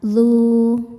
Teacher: Saat berhenti di dzu hukumnya mad thabi'i sebab wawu sukun didahului harakat dhommah. Cara bacanya panjang dua harakat, dzu. Saat diwasalkan mad-nya gugur, dzal-nya dibaca pendek dzul.